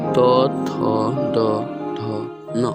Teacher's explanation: इनका उच्चारण स्थान होता है दांत। दांत से हवा टकरा कर निकलती है। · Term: त वर्ग